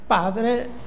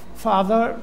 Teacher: Io faccio un esempio semplicissimo, senza basarmi sul latino o sul gotico, la prima lingua germanica veramente attestata nel IV secolo d.C., italiano e inglese mostrano la corrispondenza della P iniziale con la F, cioè si passa da una occlusiva a una fricativa labiodentale